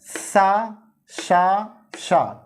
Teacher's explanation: तीनों सा जो है ये अघोष और महाप्राण होते हैं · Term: ऊष्म या संघर्षी व्यंजन